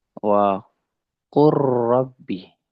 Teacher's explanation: lam fi'il yang mutlak ini disukunkan atau dimasukkan diidgham ke huruf ro. Nah, maka ini juga disebut dengan lam fi'il. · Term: diidghamkan